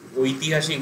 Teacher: তো ও plus ই হচ্ছে ওই, এই জন্য যৌগিক স্বর বলছে। সংস্কৃতে এটাকে উচ্চারণ করা হয় অ প্লাস ই, আই।